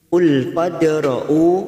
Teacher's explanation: Qul fadra'u, fad ada huruf fa, fathah diikuti alif, tetapi huruf depannya ada huruf dal sukun, maka masuk pada huruf dal sukun kita pantulkan, namanya bacaan qalqalah sugro karena mati asli di tengah-tengah kalimat